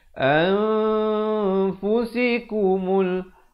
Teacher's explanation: Ini nun mati bertemu fa, ikhfa hakiki. Cara bacaannya disembunyikan bunyi nun di belakang fa kadar 2 harakat